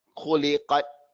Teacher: the sound stops in the ta, but afterwards the air flows. There's only two letters like that, the kaf and the ta.